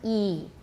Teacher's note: For the front vowels, those are the first four that we just repeated. E is the highest, high front